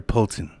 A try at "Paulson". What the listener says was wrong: You keep saying Polton now. His name's Paulson. It's Paulson.